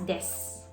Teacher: Kung mapapansin nyo, may vowel devoicing ulit. And that is yung word na desu. Kung babasahin natin, para siyang desu.